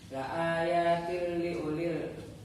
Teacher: La ayatil liulil bacaan idgham bila gunnah karena huruf ta berharakat kasrah tanwin bertemu huruf lam tasdid, dibaca lebur tanpa dengung dan bunyi tanwin menjadi hilang